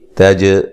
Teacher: تا کو باریک پڑھیں گے, جیم کو ہلا کے پڑھیں گے